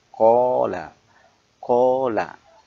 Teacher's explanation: panjangnya ketika dibaca itu dua harokat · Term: mad thabi'i